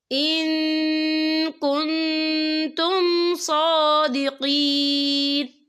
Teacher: رسول من قبلی بالبینات وبالذی قلتم فلم قتلتموہم ان کنتم صادقین، یا دیکھیں ان، یہاں نون ساکن ہے، نون ساکن کے بعد جو ہے کاف آ رہا ہے اور کاف جو ہے اکفا کا ورڈ ہے تو ہم یہاں اکفا کریں گے، نون ساکن کی آواز کو ناک میں چھپائیں گے۔